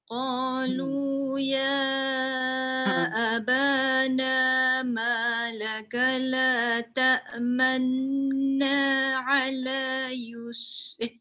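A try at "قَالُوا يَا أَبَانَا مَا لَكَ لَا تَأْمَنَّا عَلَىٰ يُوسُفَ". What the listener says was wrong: Manna. Jadi cuma dia kurang lama. Dia kena 2 harakat juga dengung dia tu. Manna ala. Yang muncung tu sekejap je. Yang 2 harakat tu dengung.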